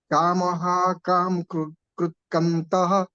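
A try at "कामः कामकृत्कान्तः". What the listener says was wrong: The second line, Kamaha Kamakrit Kantaha. This ka is dirgha there. Kamaha Kamakrit Kantaha Kamaha Kamapradah Prabhu.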